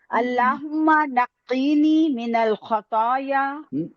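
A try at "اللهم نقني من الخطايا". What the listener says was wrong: नहीं नक्कीनी नहीं है, नी, हाँ नी पे ध्यान देना, नी पे नहीं है।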